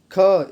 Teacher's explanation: इसमें ख लंबी आवाज़ आ रही है, ये होगा महाप्राण